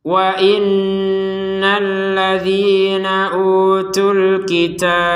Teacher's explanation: Tapi karena kita berhenti, maka huruf ba-nya ini tinggal, ya harokatnya nggak ada, ya karena sukun, dia itu tinggal hurufnya ataupun sifatnya. Jadi sifat dari huruf ba adalah pantulan.